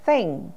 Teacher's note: in Dental sound with the tongue touches the teeth